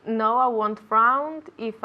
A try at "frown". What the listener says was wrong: Frown with an N. Frown with that U sound, okay? Frown, okay?